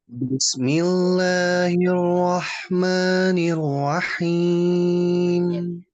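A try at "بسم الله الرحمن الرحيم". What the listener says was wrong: Ini suaranya cenderung hidung ya. Dibuka dikit Mas. Harusnya langsung. Oke Mas ya, itu nggak boleh lebih dari 2. Jadi kita harus segera langsung. Kalau mau divariasi yang belakang aja, yang him itu boleh karena panjangnya boleh.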